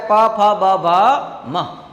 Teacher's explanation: હોઠ ભેગા થાય તો જ બોલાય